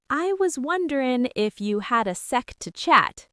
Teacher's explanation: Wonderin' drops the G and ifya links the sounds together. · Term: softening